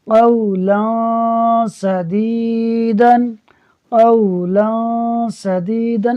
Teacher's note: میں نون نہیں پڑھ رہا، صرف ناک میں آواز کو لے جا رہا ہوں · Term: اخفاء